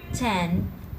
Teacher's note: you can also stop the air with the tip of your tongue at the alveolar ridge